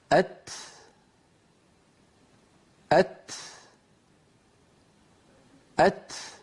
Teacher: لا بد من أن طرف اللسان يقرع مخرج التاء، ويتبع ذلك نفس يجري ويخرج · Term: حرف التاء